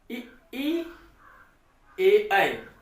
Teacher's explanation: तो ई ए ऐ, जब आप ई और ए ऐ का उच्चारण करेंगे तो आप देख पाएंगे कि जीभ का अग्रभाग इन स्वरों को उच्चारित करने में सहायता करता है, सक्रिय रहता है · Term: अग्र स्वर